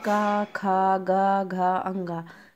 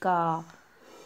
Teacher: ये जो है कंठ के सहायता से, मतलब गले के सहायता से बोले जाते हैं।